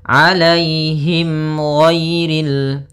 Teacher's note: ada mim mati bertemu dengan huruf ghain maka dinamakan dengan izhar syafawi maka harus jelas suara mimnya